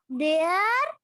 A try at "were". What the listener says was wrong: वेयर नहीं है बेटा, वर, वर, WERE, वर।